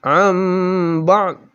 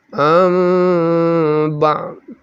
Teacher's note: Dibaca am bukan an. Kemudian didengungkan, lalu dengungnya mimnya itu tidak sempurna. Ada ikhfanya sedikit, tapi sedikit sekali. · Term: iklab